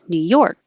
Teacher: you don't have to release the k new york just hold it there · the stress is on york new york and you don't have to release the k new york just